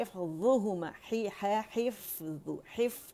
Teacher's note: حف فا کا ہمس شو کریں گے